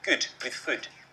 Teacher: The narrator on the commercial is Scottish, so we hear good with food. They rhyme in his accent.